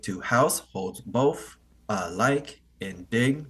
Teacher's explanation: to is not as stressed house is stressed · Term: amic pentameter